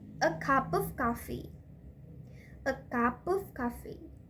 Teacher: when we pronounce the cup and of, it's connected and it's reduced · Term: connected speech reduced